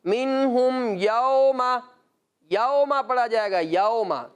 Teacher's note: مجہول کہا جاتا ہے اردو تلفظ، اردو لب و لہجہ، اور معروف کہا جاتا ہے عربی تلفظ